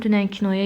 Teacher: Dünən kinoya sözlərindəki ü və o dodaqlanan saitlərdir.